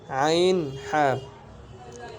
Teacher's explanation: দুই নাম্বার মাখরাজ হলকের মধ্য হইতে আইন হা